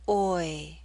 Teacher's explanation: we're using a slight Y sound, y, to make this glide possible.